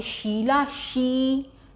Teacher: ई की मात्रा देर तक खींच रही है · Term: दीर्घ स्वर